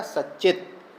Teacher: फिर आगे है सच्चित, तो सत चित। अब यहाँ पर तवर्ग है और चवर्ग का योग मिल गया, चित का च, तो त के स्थान पर क्या हो जाएगा? च हो जाएगा